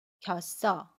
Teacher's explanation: 받침 쌍시옷이 이응 자리로 가서 겼어라고 발음해요. 연음입니다. 겼어.